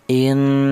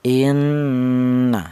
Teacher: panjangnya gunnah atau panjangnya dengung yaitu 2 harokat atau 2 ketukan